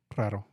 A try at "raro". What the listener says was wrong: You put a lot of emphasis on the second R.